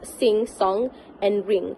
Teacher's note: sounds this uh the tongue actually rest against the soft pallet allowing the air to flow through uh flow out through the nose